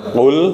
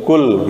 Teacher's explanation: Ini qafnya di pangkal sini nih, di pangkal lidah. Kalau k agak ke tengah, k biasa.